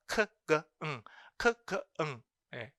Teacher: 혀의 백 부분을 올리는 겁니다.